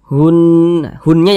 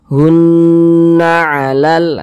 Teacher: suaranya itu kita tahan kita panjangkan sejenak kita kita gunahkan atau kita dengungkan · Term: ghunah musyaddadah